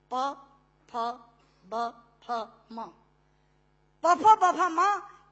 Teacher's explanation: दोनों होंठ मिलाकर बोले जा सकते हैं। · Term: ओष्ठांग